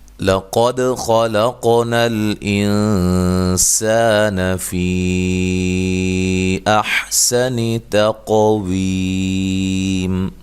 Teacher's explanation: لام کو باریک، قاف کو موٹا، دال پہ قلقلہ کرنا ہے، خا کو موٹا ادا کرنا ہے، لام کو باریک پڑھنا ہے، قاف پہ قلقلہ کرنا ہے۔